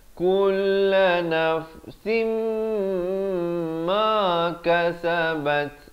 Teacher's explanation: Liyajzi Allahu kulla nafsim ma kasabat. Sim di sini dengung dulu 2 harakat, baru masuk ma, dan masuk ma 2 harakat. · ta juga bila waqaf diberikan bunyi angin ataupun bunyi hamas di akhirnya.